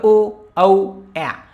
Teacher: यांचा उच्चार होताना आपला कंठ म्हणजे गळ्यामधून पण होतो आणि ओठांमधून पण होतो म्हणजे यांचा दोघांचा वापर होत होतो म्हणून यांना कंठौष्ट्य म्हणतात इथे